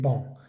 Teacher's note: y la a n es una vocal nasal